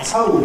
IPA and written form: tɒʊɫd (told)